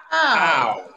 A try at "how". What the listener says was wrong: There is a diphthong in how. How. How. And that diphthong must be realized in your own pronunciation.